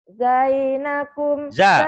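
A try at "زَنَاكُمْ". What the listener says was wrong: Jangan zai, jangan zai. Zanakum,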